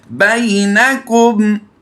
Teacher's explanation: उससे पहले हरफ पर ज़बर है, इसको लंबा नहीं करेंगे क्योंकि ये या लीन है